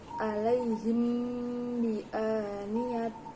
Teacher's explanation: Cara membacanya yakni mimnya disamarkan dengan huruf ba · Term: ikhfa syafawi